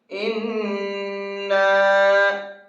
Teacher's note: ناک میں آواز گھوم رہی ہے یہ غنہ کہلاتا ہے۔ اور ساتھ میں اس کے اوپر ایک چھوٹا سا مد بنا ہوا ہے، اس مد کو 1 سے 3 الف کے برابر کھینچ کر کے پڑھا جائے گا۔